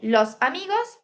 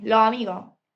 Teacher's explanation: Aspiración o pérdida de la s final.